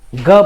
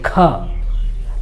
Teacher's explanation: हम लोग क बोलते हैं, ग बोलते हैं, तो इसमें ह जैसी ध्वनि नहीं सुनाई पड़ती है, लेकिन ख बोलते हैं, ख, तो उससे जो है ह भी आ जा रहा है उच्चारण में